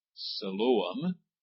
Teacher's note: The first I is the I is a long sound. The O is a long sound, and that middle syllable is the accented one.